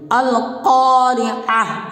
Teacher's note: یہ بڑی قاف ہے، اس کو موٹی آواز کے ساتھ پڑھیں گے